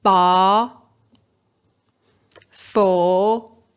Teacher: Scottish English accents are also mostly rhotic, so they do pronounce the r after vowels. In standard Southern English, yes, the r is not pronounced.